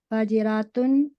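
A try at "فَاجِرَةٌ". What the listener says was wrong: کھینچنا نہیں ہے، وہ اس سے مل جائے گا پھر. جی جی فاجرتن. کھینچنا نہیں ہے سسٹر. فاجرتن.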